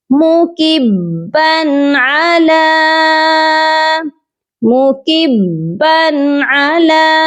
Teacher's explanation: با مشدد ہے، اس کو سختی سے پڑھیں گے